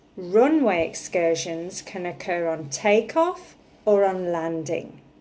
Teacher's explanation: I'm stressing runway takeoff and landing okay to be more precise I'm stressing the first syllable in runway the first syllable in takeoff and the first syllable on landing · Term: sentence stress